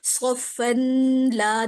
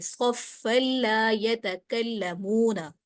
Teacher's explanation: ادغام بلا غنہ کا حرف آنے کی وجہ سے یہاں پر مدغم ہو رہا ہے اور بغیر غننے کے پڑھ رہے، صفن لا نہیں پڑھ رہے، صفا لا یتکلمون۔